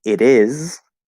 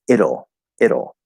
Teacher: it becomes a flat d because it connects to the vowel